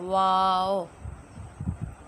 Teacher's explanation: یہ دونوں ہونٹوں کی گولائی سے ادا ہوتا ہے۔ اگر ہم دونوں ہونٹوں کو گول کریں گے تو وہاں سے واو اس طرح پڑھیں گے، واو۔